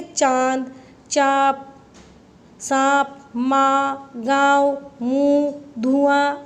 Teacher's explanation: जिस ध्वनि का उच्चारण करते समय वायु नाक और मुख दोनों स्थानों से निकलती है, अनुनासिक कहते हैं।